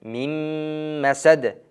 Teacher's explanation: mim harfiga tashdid berilib, g'unna bilan mim masad deb o'qiladi